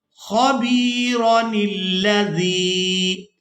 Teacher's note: کے مکمل ہونے پر وقف نہیں کرتے، تو پھر ہم نے را کو بغیر کھینچے ادا کرنا ہے اور نون کو لام مشدد کے ساتھ ملانا ہے